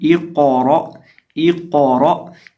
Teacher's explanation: तो ये जो क़ाफ है इसको एक तो हमने पुर करना है और दूसरा इसको हिलाना है, और रा को भी पुर करना है, और आखिर पे जो हमज़ा है उसको झटके के साथ पढ़ना है। तो इसकी आवाज़ आएगी इक़रा, इक़रा, यानी ये जो क़ाफ है इसको मोटा करेंगे और हिलाएंगे भी, और ये जो रा है इसको भी मोटा करेंगे और हमज़ा को झटका देकर पढ़ेंगे, इक़रा।